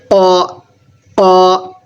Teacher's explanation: اسے قاف زبان کی جڑ سے نکالیں گے